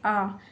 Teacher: विवृत स्वर, जिन स्वरों के उच्चारण में मुख द्वार पूरा खुलता है